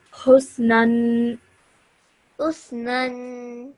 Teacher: Again, like I said to the student who read this example, the other day you did about nanation or tanween, and the noon has a fatha on top of it. So when you pronounce it tanween, make sure you stretch that nasal sound that you produce at the end